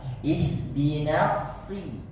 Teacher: usahakan tahan dulu di nas biar desisnya maksimal keluar, baru dibacakan si